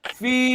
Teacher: Baris bawah ada ya. Bacaan dipanjangkan 2 harakat. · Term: mad asli